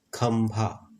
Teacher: खंभा, यहाँ पर आधा म का उच्चारण कर रहा है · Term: अनुस्वार